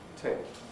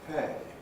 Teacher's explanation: Tape has got that Fortis consonant, pay hasn't.